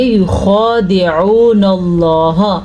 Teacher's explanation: واو ساکن ہے، اس سے پہلے پیش ہے، تو یہ واو مدہ ہے، اسے ہم کھینچ کے پڑھیں گے